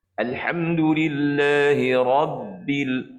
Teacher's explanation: Ba ini termasuk dalam huruf syiddah. Huruf syiddah ni huruf apa? Iaitu suara tersekat. Jadi kita cuba bagi nampak pause suara kita tu.